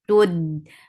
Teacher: Dal will get sifa of shidda. The sound will cut off abruptly.